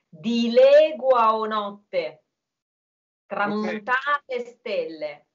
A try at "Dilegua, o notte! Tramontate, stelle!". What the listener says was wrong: So the E in the verb is closed. And then you had a very slight double N. Demonstrate to them the double T in notte. We don't technically say two T's, right?